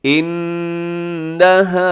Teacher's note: انہا نون مشدد اور ساتھ الف مدہ لمبا کرنا ہے، غنہ کرنا ہے